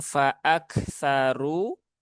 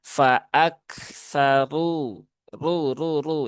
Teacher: Ro harakatnya dommah maka dibaca dengan tafkhim ya. tafkhim dibaca dengan tebal.